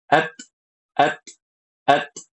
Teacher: Jadi Hames itu adalah suara yang keluar dari tekanan makhraj. Nah, kalau huruf ta tekanannya di ujung lidah, maka suaranya itu at at